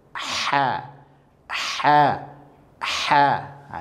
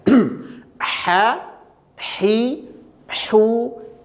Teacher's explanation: atau tempat keluarnya sama sama-sama berada di wastul halqi ya itu keluar dari tengah tenggorokan